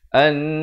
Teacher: dengungkan 2 harakat, nun mati bertemu nun, idgham bi gunnah